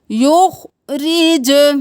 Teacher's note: रॉ ज़ेर री, बारीक पढ़ेंगे , युखरिज, जीम को कलकला करें, आवाज़ पलट के वापस आए,